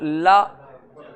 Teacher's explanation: ला दांतों के ऊपरी भाग माने दांत मसूड़े के पास जाएगी, जिसको हम लोग दंत मूल कहते हैं।